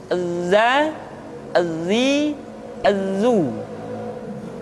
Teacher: diucapkan dengan cara ujung lidah kita berada di antara dua gigi seri bagian atas dan bagian bawah Hai menyerupai dengan pengucapan huruf z di dalam huruf latin tetapi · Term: huruf dza